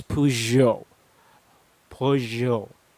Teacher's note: instead of sounding it like a g sound you sound it with a j sound with a bit of a z included in it so you pronounce this as peugeot peugeot these are usual sound